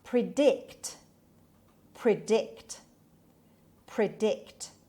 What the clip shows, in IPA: prɪˈdɪkt